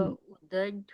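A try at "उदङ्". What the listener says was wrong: उदड होगा कि उदंग होगा? उदंग. जी, उदड नहीं, ड नहीं है ना, वो अंग है, तो उदंग.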